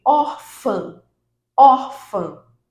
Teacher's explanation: Então a sílaba tônica é o or. Or é a mais forte. Nesse caso, ela é uma paroxítona.